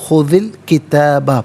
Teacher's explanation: خذ الکتابہ ملا کر پڑھنے کی صورت میں دال کے نیچے زیر ہوگا، اس سے الکتابہ کی لام ساکن کے ساتھ ملائیں گے، درمیان میں سے الف حمزہ کو حذف کیا جائے گا، اسے ہم پڑھیں گے خذ الکتابہ۔